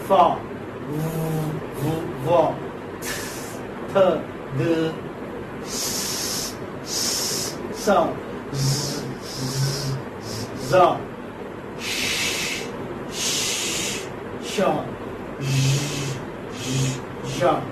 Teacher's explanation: they are sounds made by forcing breath out through a narrow opening. You have a narrow opening in the mouth. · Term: fricatives